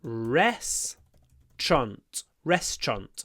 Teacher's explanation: the TR should be pronounced with a sh rest TR restant and I pronounce it with a double stress